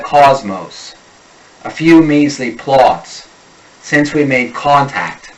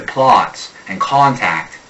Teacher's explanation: The short O becomes awe